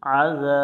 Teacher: আইন জবর আ, জাল আলিফ জবর জাল অক্ষর জিহব্বার আগা থেকে নরম করে পড়ব